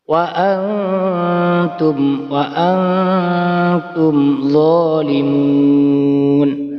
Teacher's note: Maka ketika ada nun sukun atau tanwin bertemu dengan huruf 15, maka disebut bacaan ikhfa hakiki. Cara membacanya samar dan mendengung.